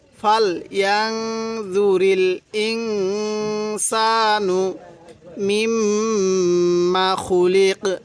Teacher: এই যে নুন সাকিনের মধ্যে গুনাহ করব, নুন সাকিনের পরে সিনটি হলো ইকফার হরফ।